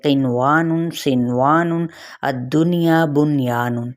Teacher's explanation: ان میں نون ساکن کا واو اور یا میں ادغام نہیں ہوگا بلکہ نون پر صرف اور صرف کیا ہوگا، اظہار ہوگا